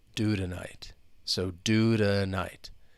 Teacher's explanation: When it comes between two vowel sounds, often it's going to become a flap T. And it's going to sound like a soft D. So even though that T is at the beginning of the word, well, the word before that, do, it still is going to come between those two vowel sounds.